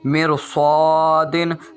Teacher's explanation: را ساکن ہے تو اس کو پر کر کے پڑھیں گے۔ یہ دیکھیے میں آپ کو پڑھ کر سناتا ہوں، مرصادن، یہ را کو پر پڑھ کر پڑھا ہے۔